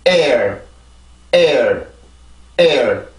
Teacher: 뒤에 있는 모음은 이제 강세가 없는데 앞에 있는 모음에서 성대가 긴장이 됐다가 뒤에 있는 모음을 할 때는 풀어주고 이렇게 발음을 해주면 돼요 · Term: 이중모음